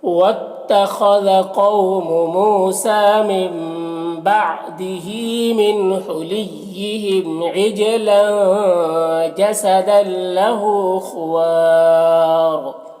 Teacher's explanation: را کا دو پیش کی جو تنوین ہے وہ سکون سے بدل جائے گا، تو پھر یہاں پر مد عارض وقفی ہوگا۔ اس میں طول، توسط، قصر تینوں جائز ہوتا ہے، طول اولا ہوتا ہے، پھر توسط، پھر قصر کا مرتبہ ہوتا ہے، اور را کو پر پڑھیں گے تو اس طرح سے پڑھیں گے۔